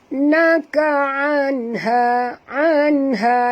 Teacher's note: nun mati bertemu ha, tak boleh dengung, izhar halqi.